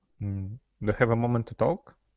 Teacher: see the end your intonation Rises because it's a yes and no question